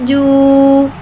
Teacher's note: उल्टे पेश को होठों की गुलाई के साथ अदा करके पढ़ेंगे। जीम, उल्टा पेश जू।